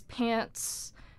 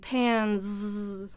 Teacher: pants has the s sound, and pans has the z sound